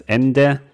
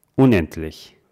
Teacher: Wenn man sagt zum Beispiel das Ende, jetzt höre ich ein D, aber unendlich, man hört eher ein T